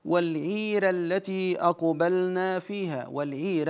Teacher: ايضا قوله تعالى والعير التي اقبلنا فيها والعير هنا رقنا الراء الراء مفتوحه بعد ياء ساكنه حكمها الترقيق عند ورش